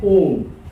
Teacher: जिन स्वरों के उच्चारण में हर्ष स्वरों से लगभग 3 गुने का समय लगता है उन्हें ही हम कहते हैं प्लुत स्वर